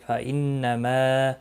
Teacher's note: ما مد منفصل ہے، تین الف کے برابر کھینچ کر پڑھیں گے۔